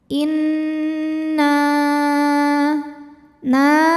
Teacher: musyaddadah atau wajibul ghunah atau Nun musyaddadah sebab nunnya bertasydid maka cara bacanya adalah dengung bunyi n-nya tahan sampai ada suara masuk hidung kurang lebih dua harakat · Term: ghunah musyaddadah